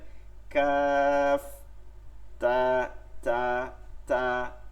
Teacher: এর মধ্যে একটু কথা হয়েছে যে কাফ এবং তায়ের ক্ষেত্রে যদি একটা হামস রাখা যায়, একটু বাতাসটা চলমান রাখা যায়, তাহলে তেলাওয়াতটা আরো সুন্দর হয়ে যায়। যেমন কাফ, কাফ, কাফ বলার সময় খয়ের দিকে একটু চলে যাওয়া, তা তা বলার সময় থয়ের দিকে একটু চলে যাওয়া, থ পড়ি না আমরা বাংলায়, কাফ তা তা তা, এই যে একটু বাতাসটা চলে, তা কাফ তা।